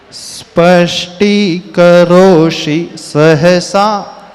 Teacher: स्पष्टीकरोषि में षटकोण का श है और सहसा में दंती स है